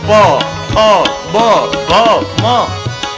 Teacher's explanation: તમારે પ ફ બ ભ માં બોલવા હોય તો એ ઓષ્ઠ છે, હોઠ બંધ કર્યા વિના બોલી જ ન શકો